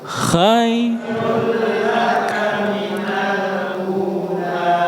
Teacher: Idgham bila gunnah. Masuk tanpa ditahan lama.